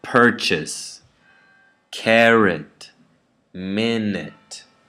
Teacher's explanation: The last syllable is unstressed now, and the first syllable is stressed.